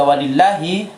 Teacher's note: bacaan walillahi tetap dibaca panjang meskipun di atas lam jalalah tidak ada tanda baca fathah panjang